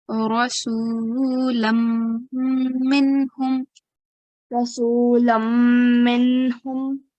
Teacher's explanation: we have a tanween followed by mim mushaddad. Okay, so we have to do idgham here.